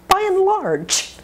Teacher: Now by and, the N is the word and. We shorten it or reduce it.